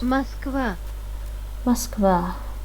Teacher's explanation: you can hear that we pronounce the letter O as A in the word Moskva